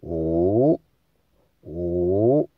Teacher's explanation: 然后第五声是往上扬的，所以我们就把五念成上扬声